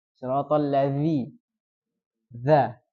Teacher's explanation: Ujung lidah. Nah, dengan 2 gigi seri. Jadi semacam gigit.